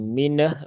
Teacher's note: Jadi tunaikan dulu tawasud nun, setelah itu baru pindahkan ke huruf H. Karena kalau langsung disambung menjadi mineh begitu, nah, nanti nunnya jadi seolah-olah ada pantulannya.